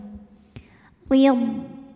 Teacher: Huruf ra dibunyikan secara tarqiq sebab ra berbaris kasrah, maka ra dibunyikan dengan tipis. Pangkal lidah kita turun ya.